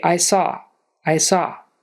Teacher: the first way is when there's a vowel plus a consonant the vowel just kind of runs into the consonant and it all kind of smoothly Blends together there's no pause in the middle